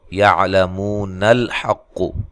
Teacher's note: یہ حمزہ گر جائے گا۔